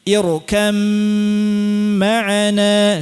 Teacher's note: Asalnya irkab ma'ana. Diidghamkan ba'nya hilang sempurna masuk langsung ke mim dan digunnahkan. Makanya mimnya menggunakan tasydid irkam ma'ana, silakan. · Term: idgham ba fil mim